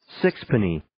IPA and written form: 'sɪkspəniː (Sixpenny)